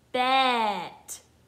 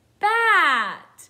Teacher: I need to change the eh sound to an ah sound.